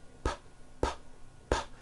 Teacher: saying the sound you feeling any vibrations in your throat no your vocal cords are not producing a sound